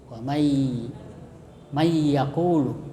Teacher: Jadi nunnya itu yang baris sukun dimasukkan ke ya atau ditasdid. Jadi menjadi satu dengan ya. Jadi tidak dibaca nun mati tapi dibaca tasdid pada huruf ya, mayyaqulu, dengan mendengung. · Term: idgham